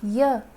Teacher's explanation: जब आप य बोलते हैं तो आपकी जीभ कहीं टच हो रही है? नहीं हो रही है। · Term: अंतस्थ व्यंजन